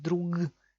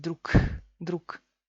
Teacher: Al final de la palabra tenemos G. Y se convierte en K. ¿Por qué? Porque no hay fuerzas para pronunciar G y lo pronunciamos como K.